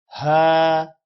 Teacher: کھڑی زبر کو تقریباً 1 سیکنڈ لمبا کرنا ہے